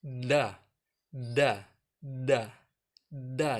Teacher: giginya Nah kalau ompong sudah anggap saja ada giginya nah disitu ujung lidah ketemu pangkal gigi seri atas dah-dah dah-dah Yana beda dengan Nah kalau Nah itu dengan gusi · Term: huruf dah